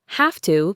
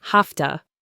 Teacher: the V sound in have changes to an F sound and to reduces to t. So have to becomes hafta.